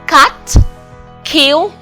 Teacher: the voiceless stop, made with the back of the tongue on the soft palate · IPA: /k/